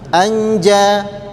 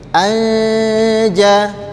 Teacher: Karena hurufnya samar samar. Huruf nunnya dibaca dengan samar-samar. Jadi tidak boleh dibaca dengan jelas. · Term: ikhfa hakiki